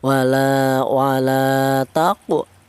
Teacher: Dibaca qalqalah atau dibaca ada suara pantulan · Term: qalqalah sughra